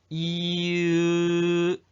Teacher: 이으 이으 다시 한번 이으 자 혀가 앞으로 가요 뒤로 가요 이에서 으로 갈 때 이으 어떤 게 더 소리가 깊어져 혀가 더 뒤로 가 으죠 으 이에서 으로 갈 때 혀가 뒤로 가죠